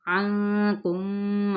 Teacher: آئین کو وسط حلق سے ادا کرتے